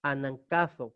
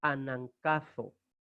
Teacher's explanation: el valor nasal de la gamma delante de una kappa